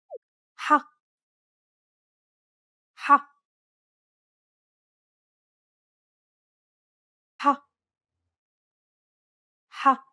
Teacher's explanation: It sounds a bit like you're clearing your throat. You should feel like you're pronouncing an H sound with some friction. You should feel some pressure at the back of your mouth near your throat area. One trick to produce this sound is to push your tongue as far back in your mouth as you can and then say the word hot.